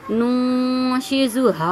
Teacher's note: اب نون ساکن کے بعد تا آ رہا ہے، اب یہاں پہ حکم لگ گیا کہ نہیں بھائی، اب آپ کو جو ہے یہاں پہ نون ساکن کے بعد تا آ رہا ہے تو اخفا کا قاعدہ لگ رہا ہے، تو آپ کو نون ساکن کو چھپانا ہے، یعنی ناک میں آواز لے کے جانی ہے۔ تو اب ہم یہاں پہ گنہ کریں گے، ٹھیک ہے، آتا آتا، ٹھیک ہے۔